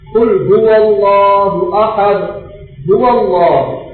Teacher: அல்லாஹ் என்ற வார்த்தைக்கு முன்னால ஃபத்ஹா அல்லது வம்மா வந்துச்சுன்னா அதை மொத்தமாக சொல்லணும்